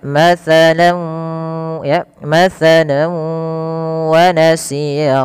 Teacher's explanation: nunnya diganti dengan W sehingga masuk yaitu kita kenal dengan istilah idgham bighunna artinya disertai dengan penahanan atau masukkan ke rongga hidung kita